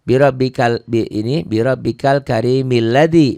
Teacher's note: Milladzi ini a-nya nggak bunyi kalau diwasal, kalau disambung. Tapi kalau di wakaf, kalau kita berhenti bi rabbikal karim, kalau nggak disambung ini bunyi jadi a.